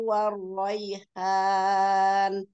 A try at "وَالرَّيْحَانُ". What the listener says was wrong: War, takririn dikit lagi ya. War roy, war roy.